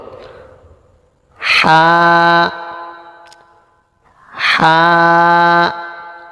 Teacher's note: কন্ঠনালীর মাঝখান থেকে গরম বাতাসের সাহায্যে উচ্চারিত হবে